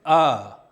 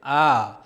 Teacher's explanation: एक ह्रस्व में 1 मात्रा का प्रयोग होता है, जैसे अ। दीर्घ में 2 मात्रा का प्रयोग होता है, जैसे आ। प्लूत में 3 मात्रा का प्रयोग होता है, जैसे मुर्गा का तीसरा ध्वनि कू।